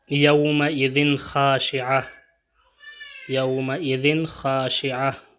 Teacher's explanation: چونکہ یہاں پہ تنوین کے بعد حرف خا آیا ہے اس لیے یہاں پہ بھی اظہار ہوگا